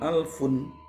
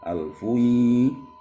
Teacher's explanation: Jangan alfun ya. Bunyi nunnya dileburkan ke idghamnya